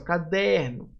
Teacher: O der aqui vai ser a sílaba mais forte. Por isso vai ser uma paroxítona e não uma proparoxítona.